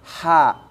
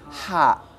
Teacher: Nah, ini, Pak, jangan ada nyangkut jadi kha, ya.